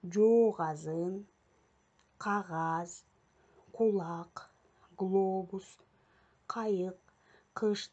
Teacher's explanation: к, г тыбыштары жоон үндүүлөр менен келгенде жооноюп айтылып, кулакка дагы ошондой жоон болуп угулат